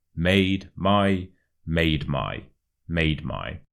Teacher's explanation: the ma and the my kind of merge together as if they were one word